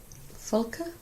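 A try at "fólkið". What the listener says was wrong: Oh, very good.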